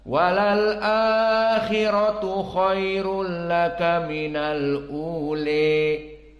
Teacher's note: Dan qiraah yang keempat, qiraah Al-Kisai, yang mana dia sama seperti qiraah Hafs an Asim, namun al-ula di sini al-imalah al-kubra menjadi al-ule. Dan di sini pun sama, mad badal dibaca 2 harakah dan tidak ada naql, maka sama seperti qiraah Hafs, namun bedanya al-imalah di al-ule.